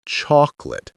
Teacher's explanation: notice how the O in the first syllable sometimes sounds more like aw or ah, chocolate.